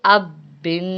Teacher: با کے نیچے 2 زیر ہیں تو اس پہ ہم غنہ کریں گے، اب بن۔ حمزہ با زبر اب، با دو پیش بن، اب بن۔